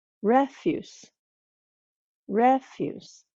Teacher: the second word refuse refuse so the stress is on the first syllable for that word